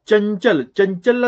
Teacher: चंचल जशी जीभ आपली दातांच्या मागे लागते